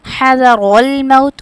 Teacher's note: اور را کو موٹا پڑھیں گے